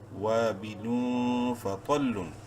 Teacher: تنوین کے بعد فا حروف حلقی میں سے نہیں ہے، اخفا ہوگا یہاں پر۔